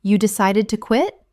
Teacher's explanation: Utilizing a rising intonation, this invites them to elaborate on their reasons.